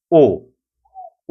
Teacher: সংবৃত উচ্চারণ হলো ঠোঁট কাছাকাছি থাকে অর্থাৎ অষ্ঠের আকৃতি গোলাকার হয়